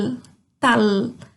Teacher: A língua termina lá no céu da boca.